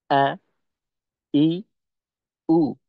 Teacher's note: হামজাটাকে হলকে শুরু থেকে আমাদের উচ্চারণ করতে হবে